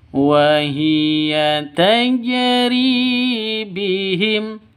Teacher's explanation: tajri harus dipantulkan ke huruf jimnya, huruf qalqalahnya. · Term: qalqalah sugro